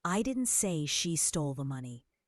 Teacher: Emphasizing money suggests she stole something else.